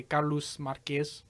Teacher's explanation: So the sh sound is replaced for s.